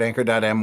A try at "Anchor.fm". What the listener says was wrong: Anchor.fm. You said Anchor.m. Yeah, you said Anchor.m.